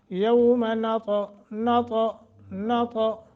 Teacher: زبان کا اگلا حصہ ثنایا علیہ کے ساتھ ملا لیں تو تا کا مخرج · زبان کا جو نوک والا حصہ ہے وہ تھوڑا سا جا کے ٹکرائے گا ثنایا علیہ کے اوپر جڑوں کے ساتھ، تو تا کا مخرج ادا ہو جائے گا